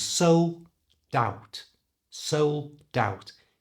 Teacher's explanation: do it with this phrasal verb sold out to do it it simply moved the D from the end of sold to the front of O of out